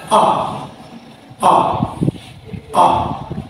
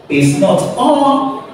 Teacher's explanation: the center of the tongue is raised while the jaw is slightly open with the lips in neutral position. So if you are to pronounce this vowel sound, the center of your tongue has to be raised while the jaw is slightly open with the lips in neutral position. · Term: central vowel